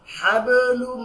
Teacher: কারণ আমরা জানি যে নুন এবং মিমের মধ্যে যদি তাসদিদ থাকে তাহলে ওয়াজিব গুণনা হয়, গুণনা করে নাকের মধ্যে ঢুকে পড়তে হয়